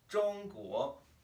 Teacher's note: in order to produce a 国 correctly, we have to start down here. We have to start really low at the bottom of our register. It's going to be kind of uncomfortable.